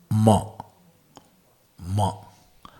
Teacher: Ma from where? Lips plus nasika.